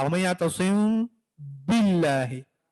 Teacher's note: मीम है इसको आप मामूली से छुपाएंगे, होंठ मुकम्मल तौर पर नहीं मिलाएंगे, बिल्कुल टच करके मामूली से वाइब्रेट करेंगे। वमन यातसिम, और फिर जब आप बा पढ़ने का इरादा करेंगे तो होंठ मुकम्मल तौर पर मिला के बा का आवाज निकालेंगे, बा की आवाज निकालेंगे। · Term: इख्फा